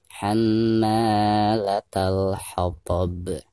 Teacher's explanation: Karena ada alif lam berhadapan dengan salah satu daripada huruf qamariyah yaitu ha ya. maka cara membaca alif lamnya itu harus dijelaskan atau dizohirkan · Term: alif lam qamariyah